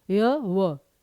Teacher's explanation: यह अर्ध स्वर होने के साथ-साथ संघर्ष हीन व्यंजन भी है क्योंकि इनके उच्चारण में संघर्ष नहीं करना पड़ता